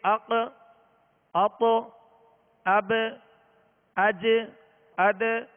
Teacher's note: یہ جو آواز لوٹتی ہوئی آواز آ رہی ہے اسے کہتے ہیں قلقلہ